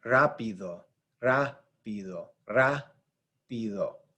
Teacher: ra is the stressed syllable right here.